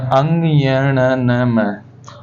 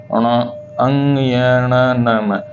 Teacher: तो अधिकतर जो आवाज आ रही है अपनी नाक से आ रही है मुह का सहारा कम लेना पड़ता है इसमें ज्यादा सहारा नाक का लेना पड़ता है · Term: नासिक व्यंजन